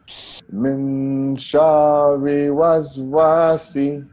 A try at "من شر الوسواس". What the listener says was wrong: الوسواسي. There is lam here. We have to pronounce it. This is Hamzatul Wasl. We can't pronounce it. But we have to pronounce the lam. من شر ريل. ريل. From ra to lam. Direct.